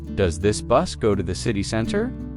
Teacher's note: In fast speech, does this often sound like do this?